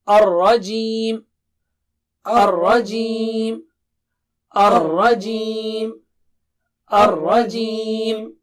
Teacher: را کی جو ہے نا وہ جو تکرار ہے وہ سامنے آنی چاہیے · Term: را موٹا